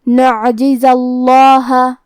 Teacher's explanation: لن نعجزہ، کلمت نعجزہ میں آخری میں زے پہ زبر ہے اور اس کے بعد لفظ الجلالہ مطلب کلمت اللہ کے لام کو ہمیں موٹی آواز میں پڑھنا ہے